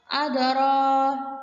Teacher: ada huruf qalqalah mati pada pertengahan kalimat, dipatulkan dengan tipis